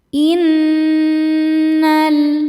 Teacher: Innal nun tasydid dihukumi gunnah musyaddadah karena nunnya bertasydid. Cara bacanya berdengung, tahan dengungannya kurang lebih 2 harokat.